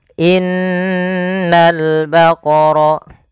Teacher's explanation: Cara membacanya, menahan dulu suara n-nya sepanjang 2 harokat baru dilepas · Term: gunnah